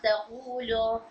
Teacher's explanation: for example यहाँ से मैं दिखाती हूँ, तक़ूलो, मैं लाम को रॉ से मिला रही हूँ, तक़ूलो, तक़ूलो, तो ये हमजा गिर जाएगा मिलाकर पढ़ने की सूरत में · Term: हमज़तुल वस्ल